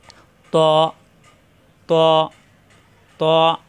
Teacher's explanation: জিহ্বার আগা উপরে দাঁতের গোড়ায় লাগবে